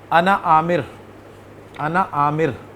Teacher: اگر یہ ضمیر کسی دوسرے لفظ کے ساتھ ملا کر، یعنی اس کے بعد ایک لفظ اور بولا جائے، یعنی دو لفظوں کو اکٹھا بولا جائے، تو یہ جو انا ہے، اس انا کے اینڈ پہ جو الف نظر آ رہا ہے اس کو نہیں بولا جاتا